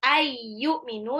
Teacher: nun sukun ketemu ya, itu ambil gunah, nunnya 2 harokat.